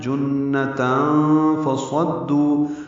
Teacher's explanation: جنہ میں نون مشدد پہ غنہ ہے اور تنوین کے بعد فا آنے کی وجہ سے اخفا ہے۔ جنتاً فصدوا، صاد پر پڑھیں گے، دال سے ملائیں گے، دو واو مدہ ہے۔